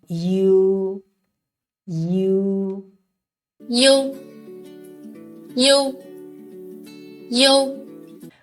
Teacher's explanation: well let's move on to you when producing this compound final first we need to say e and then quickly Glide to say o